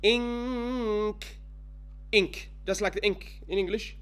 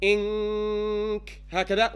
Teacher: your ghunna is going to be on the makhraj of the qaf or kaf.